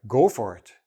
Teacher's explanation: I'm stressing the go, like, don't hesitate.